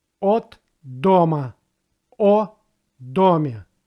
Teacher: a preposition in a sentence is not treated as a meaningful word, and for that reason will be pronounced like a.